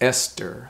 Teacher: the t is pronounced the s is pronounced but the h is silent